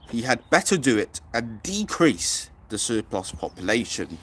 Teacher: this quote is full of plosives, the D's, the T's, the P's